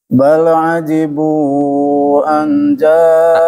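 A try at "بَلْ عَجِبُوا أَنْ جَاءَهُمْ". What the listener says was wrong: Angnya kurang ditahan. Bal ajibu anja. Ada dua tuh ditahan. Pertama hum mim ketemu mim dengan mim nun ketemu zal.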